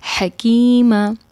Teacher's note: یہاں پر ح ہے جو کہ وسطی حلق سے ادا ہوتا ہے